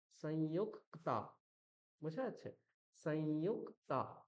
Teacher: কয় তয়ের প্রথম যে অক্ষরটা রয়েছে ককার, তাকে দুবার উচ্চারণ করতে হবে। কিরকম, সংযুক, এই যে আমি ইউক ককার কয় হলন্ত বললাম সংযুক, তারপর আবার ক্তা, সংযুক্তা। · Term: দ্বিত্ব